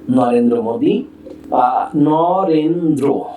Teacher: আমরা এতক্ষণ রফলা যার সঙ্গে যুক্ত হয়েছে সেই বর্ণটিকে দ্বিত্ব উচ্চারণ করেছি, কিন্তু যুক্ত ব্যঞ্জনের সঙ্গে যখন রফলা যুক্ত হবে সেই রফলার ক্ষেত্রে ব্যঞ্জন বর্ণের দ্বিত্ব হবে না, বরং যা আছে তাই থাকবে